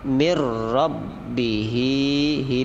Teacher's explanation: idgham bilagunnah langsung masuk ke huruf ro